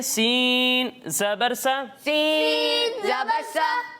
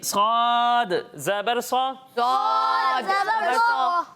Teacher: सीन को हमने बारीक पढ़ना है और स्वाद को मोटा करके पढ़ना है, क्योंकि स्वाद हुरूफ मुस्तारिया में से है।